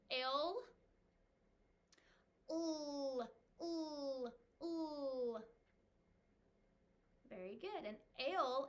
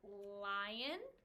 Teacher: our tongue is going to come up to the roof of our mouth behind our front teeth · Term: L sound